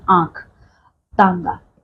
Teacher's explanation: जब आप इनका उच्चारण करते हो तो सांस हमारे मुख से और हमारे नाक से दोनों से निकलती है, ठीक है? और ये हल्का सा गर्म होता है, ठीक है? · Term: अनुनासिक